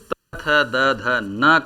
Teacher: त वर्ग का उच्चारण दंत से होता है